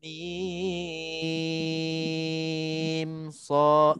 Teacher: Dia tutup mulut tapi tanpa dengung.